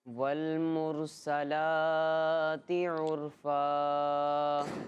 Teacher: انہوں نے سین کی حرکت کو نہیں کھینچا، لام کی حرکت کو کھینچا، کیونکہ سین پر زبر تھا، ٹھیک ہے، زبر حرکات میں سے حرکات کو کھینچ کے نہیں پڑھتے، اور لام پر کھڑا زبر اور کھڑی حرکات کو ایک الف یعنی 2 حرکت کے برابر کھینچ کے پڑھتے ہیں۔